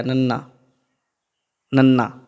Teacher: ਉਦੋਂ ਉੱਤੇ ਚੱਲ ਜਾਓ, ਫਿਰ ਨੰਨਾ ਆ ਗਿਆ, ਨਾਸਕੀ ਹੈ, ਉਹ ਜੀਭ 'ਤੇ ਚੱਲ ਗਿਆ, ਨੰਨਾ, ਨੰਨਾ ਦੰਤੀ ਅੱਖਰ ਹੈ ਇਹ, ਜੀਭ 'ਤੇ ਦੰਦ